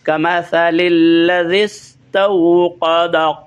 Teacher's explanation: کمثا یعنی نوک زبان کو اوپر والے سامنے والے دونوں دانتوں کی آخر پہ لگانا ہے، جڑ میں نہیں بلکہ نوک پر، وہاں سے سا ادا ہوگی۔